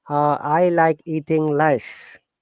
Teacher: because we don't have r we replace r with l